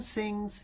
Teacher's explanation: In fact I say say but as soon as you sustain a sound it starts to be more like singing. So if you just say sing and stop you just get the quality of the hum at the end very briefly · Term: ng hum